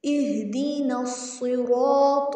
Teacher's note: صاد کو بھی موٹا پڑھنا ہے، رو کے اوپر زبر ہے، رو کو بھی موٹا پڑھنا ہے، اور رو کو کھینچنا بھی ہے کیونکہ آگے الف آ گیا، اور تو کو بھی موٹا پڑھنا ہے۔